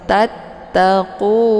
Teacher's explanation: Kemudian tata, ada ta yang bertasydid, cara bacanya ditekan sedikit kemudian langsung dimasukkan ke dalam huruf ta yang kedua